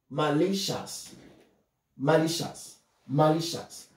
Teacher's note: you see the stress is on the second syllable